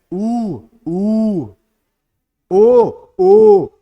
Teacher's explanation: होठों में सर्कल जैसा बन रहा है। तो ये वृत्त मुखी हो गए।